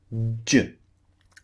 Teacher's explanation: you're building up air pressure, and then suddenly the tongue drops and the pressure is released.